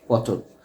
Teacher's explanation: এখানে কিন্তু একটা ও চলে আসলো মাঝখানে টর সাথে একটা ও উচ্চারণ চলে আসলো